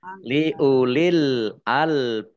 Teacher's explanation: kolkolah kalau di akhir kalimah ini namanya kolkolah kubro. Maka ditampakkan pantulannya. Lebih ditampakkan maksudnya.